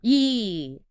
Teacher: A completely different physical posture. For E, your mouth actually spreads, kind of like a small smile. Your tongue goes high and forward toward your teeth. There's real muscle tension. So it's a sustained sound. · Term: long E